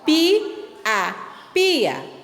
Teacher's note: Se você percebeu, quando você fala, a pronunciação da letra A fica separada da letra I, da vogal I, ó, pia, pia. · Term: hiato